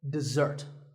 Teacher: this is dessert notice that the first syllable is dead and the second starts with a Z sound we stress the second syllable